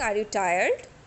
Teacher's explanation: I know you were tired, but to confirm, I am asking, are you tired? So I am using rising tone here.